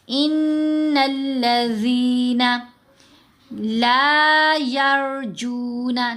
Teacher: لا کو بھی لمبا کر لیا اور جو کو بھی لمبا کر لیا. بہت زیادہ لمبا نہیں کرنا، صرف 2 سیکنڈ کے لیے 2 حرکات کی مقدار لمبا کریں گے.